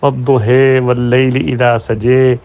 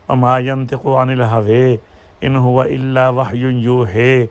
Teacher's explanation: الف کو چھوٹی یا اور الف یا کے درمیانی آواز میں پڑھنا، زبر کو زیر اور زبر کے درمیانی آواز میں پڑھنا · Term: امالہ